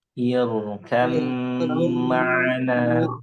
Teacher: Nah, jadi ba bertemu mim dia dibacanya irkam ma'ana. Jadi baknya nggak muncul. Ini namanya idgham kamil.